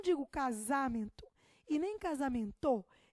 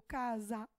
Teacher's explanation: o me é a minha sílaba tônica